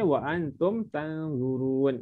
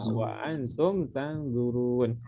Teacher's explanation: Wa antum dia tak ada bunyi dengung, dia tidak ada.